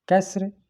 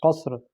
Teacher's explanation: کاف کی آواز باریک، اس میں قاف موٹی، سین باریک، صاد موٹی